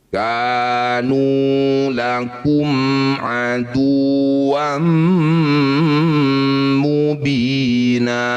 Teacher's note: Mim sukun bertemu bukan dengan mim atau ba disebut bacaan izhar syafawi. Cara bacanya bunyi mim baca dengan jelas. Rapatkan bibir tanpa dengung.